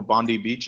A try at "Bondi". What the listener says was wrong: Bondi, not Bundy.